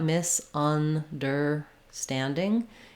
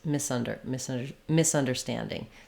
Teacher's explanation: I do really have to be fast and have reduced Sounds here on the misunder · standing or standing then you start with your on understanding so keep your under under really fast and then your stand Standing is stretched